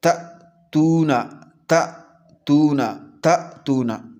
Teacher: حمزہ ساکنہ کو جھٹکے کے ساتھ پڑھیں گے